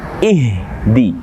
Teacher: Maka huruf H di sini dia harus getarannya pada adnal halqu atau kerongkongan yang paling bawah.